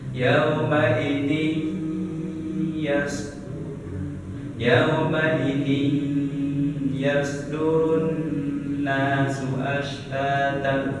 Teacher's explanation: Cara pembacanya yaitu ditahan dengunya selama 2 harokat. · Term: digomi gunah